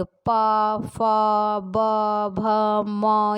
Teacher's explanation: ओष्ठ से उच्चारित होने वाले होते हैं पा वर्ग